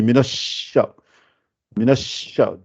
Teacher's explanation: Minasha, parce que comme s'il y a deux shins, la première avec shadda, c'est pour ça qu'on dit ash, minash.